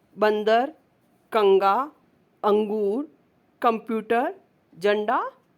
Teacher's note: बिंदी रूप में जब हम अम का प्रयोग करते हैं तो उसे हम अनुस्वार कहते हैं। इसका उच्चारण नाक से होता है